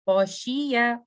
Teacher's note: उसके बाद खौशिया, खौ, मैं इसको खै नहीं पढ़ूंगी, मैं ऐसे नहीं पढ़ूंगी, खैशी नो, खौ हैवी लेटर है, back of the tongue goes up, तो मैं पढ़ूंगी खौ, खौशिया। खौ कहाँ से आ रहा है, रूट ऑफ द टंग से और सॉफ्ट पैलेट से